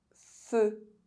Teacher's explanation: EU is pronounced [ø] if at the end of a word